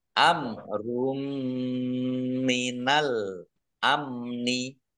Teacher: mim bacaan ID bunah masuk dengan mendengung yaitu mendengung mim ditandai mimnya ada tasdidnya ditahan dua harakat biar tampak dengungannya